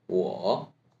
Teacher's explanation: wa- in 3rd tone by adding some hoarse voice